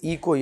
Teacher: इ को य हुआ क्योंकि दोनों का उच्चारण स्थान तालु समान है